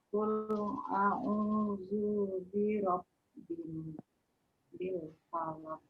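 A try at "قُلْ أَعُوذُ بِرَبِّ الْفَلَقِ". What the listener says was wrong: Di sini zu-nya pendek aja. Qul a'udzu birabb langsung. Zu birabbil falaq.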